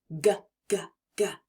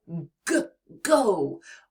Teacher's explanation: It's bold and strong, almost like a growl from the back of your throat. To make the G sound, the back of your tongue is going to touch the soft part of the roof of your mouth, near the back of your mouth. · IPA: /g/